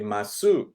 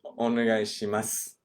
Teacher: The su at the end. You kind of drop the u sound.